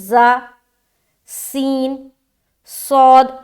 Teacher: تو دیکھیے جب ادا کریں گے نا، جیسے کہ زا، سین، صاد، تو سب میں پہلے سیٹی والی ظاہر ہو رہی ہے، اس کے بعد حرف ادا ہو رہا ہے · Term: سیٹی والی صفت